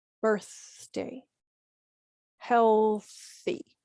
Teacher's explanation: the th in the middle of words is going to be pronounced as the unvoiced sound